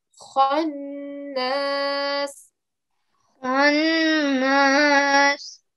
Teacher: Just like the ra, we gave a thick ra sound, you need to give a round mouth to the kha as well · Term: round mouthed letters